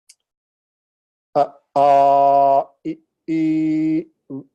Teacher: short and long, one measure or matra, and then two measures